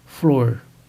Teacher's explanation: a realização do R retroflexo, que é aquele que encontramos numa palavra como flor, pronunciada flor